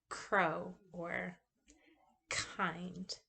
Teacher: it's a voiceless velar stop. It doesn't have the vibration in the sound